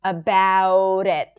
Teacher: You can also pronounce it as a flap T between two words when you connect them together.